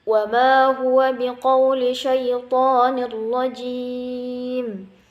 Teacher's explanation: kemudian ada nun mati bertemu ra, hukumnya idgham bila gunnah. Nah, dia cuma dimasukkan tanpa didengungkan.